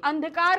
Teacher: हमारे मुंह से उतनी नहीं निकल रही। लेकिन जब हम अंधकार बोल रहे हैं तो नाक से भी निकल रही है और गले से भी आ रही है, दोनों जगह से हमारे आ रही है।